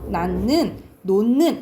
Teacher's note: 원래 낳는인데 디귿과 니은이 만나면 비음화가 일어나요. 그래서 결과적으로 비음화 현상이 일어나서 결과적으로 낳는 이렇게 발음된다라고 생각하면 돼. · 받침 히읗 뒤에 니은이 결합되는 경우에는 니은이 소리가 납니다.